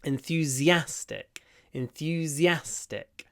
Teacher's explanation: The stress is on the a at the end.